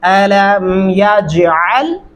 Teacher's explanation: علم یجل قاعدہ ہم پڑھتے ہیں، یا جل یعنی جل، جیم کے اوپر زبر لگا کے پڑھتے ہیں اور عین کو بیچ میں سے ویسے ہی اڑا دیتے ہیں، اس کا وجود ہی ختم کر دیتے ہیں